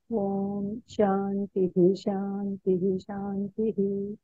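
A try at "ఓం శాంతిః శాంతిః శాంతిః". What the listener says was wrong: కొద్దిగా స్పీడ్ పలుకుతున్నారు అదే కొంచెం స్లో గా చేస్తే సరిపోతుంది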